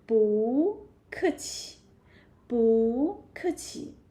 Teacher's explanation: But 不 is a very special syllable. And when together with another falling tone, So you can say change it to rising tone.